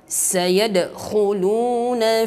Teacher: Sayadkhu, kha dari tenggorokan. Pangkal tenggorokan ini kha, ada orokannya, dan dia juga tafkhim karena dia sifatnya isti'la. Khu, lu, kha dhammah, lam dhammah.